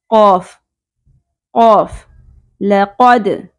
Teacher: قاف کو پر کریں گے، ٹھیک ہے، اس کو حروف لہاتیہ بھی کہتے ہیں